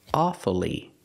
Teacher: sometimes you'll hear Americans say awfully and pronounce it with three syllables pronouncing the U following the rule